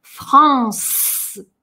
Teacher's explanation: «Э» на конце не читаем, но хорошее «с» звучит. Оно хоть и глухое, но оно длится. «Франс».